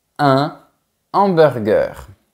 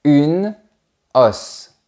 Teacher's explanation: On ne fait pas de liaison, ni d'enchaînement. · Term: H aspiré